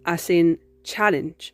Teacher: The sound ch for the CH in Spanish is a voiceless post-alveolar affricate. This means that it's articulated with the blade of your tongue placed against the alveolar ridge or gum line as we saw before.